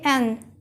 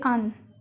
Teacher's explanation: Notice that, in natural speech, we don't say 'an', we say /un/.